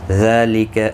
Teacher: ذال کے اوپر کھڑی زبر ہے، ایک الف کی مقدار کے برابر کھینچ کر پڑھیں گے